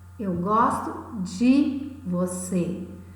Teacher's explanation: O som do E é tão fraco que até muda a sonoridade. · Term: monossílabo átono